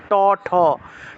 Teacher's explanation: জিউভা উল্টে ট উচ্চারণ করলে দেখবেন জিউভাটা উপরের দিকে লাগছে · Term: মূর্ধন্য